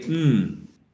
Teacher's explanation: nasal that we say we say mmm we say hmm okay the airstream goes through the nasal cavity okay so that happens when the uvula is down or lowered